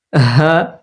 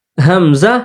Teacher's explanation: পড়বো এবং কি বলে হামজা আর হা এটা শক্ত করে পড়বো শ্বাস চালু হা শ্বাস চালু হামজা শ্বাস বন্ধ